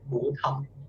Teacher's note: The second syllable is very light.